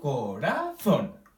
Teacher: Pronunciamos más fuerte el zon. Y es una palabra que termina en N. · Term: sílaba tónica